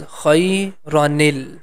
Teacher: Like that, in the second example, if you see this word is khayra, there is a fatha top of letter ra, and after that small noon with kasra, which is the ni sound. This ni sound is going to connect with lam. It becomes khayranil. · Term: hidden noon